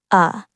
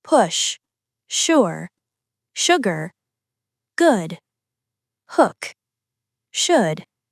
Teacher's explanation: This is the short, rounded uh sound. It's quick, gentle, and one of the least common vowel sounds. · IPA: /ʊ/